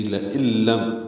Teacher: لَإِلَّمْ میں لام کو جلدی پڑھنا ہے، حمزہ یا کی شکل میں ہے، نون ساکن کے بعد لام آنے کی وجہ سے ادغام ہے، ادغام کامل ہوا ہے، نون کی آواز ختم ہو جائے گی. لَإِلَّمْ حمزہ کو لام سے ملا دیں گے.